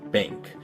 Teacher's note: this is an N but it's pronounced with the back of your tongue instead of with the front